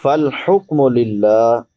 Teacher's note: لفظ اللہ باریک ہوگا کیونکہ لفظ اللہ سے پہلے زیر ہے